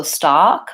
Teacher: stock my tongue is back and my mouth is also open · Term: AH vowel, the ah vowel